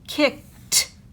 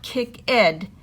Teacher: We see the word kick, and it ends in K. So when you add ED, it makes T, kicked, not kick-ed, kicked.